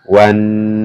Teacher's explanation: Nun bertasdid maka di baca mendengung dan ditahan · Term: bacaan gunah